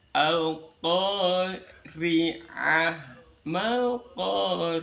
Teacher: Jadi yang rin-nya ri di alqori itu rnya dibaca tarqiq dibaca tipis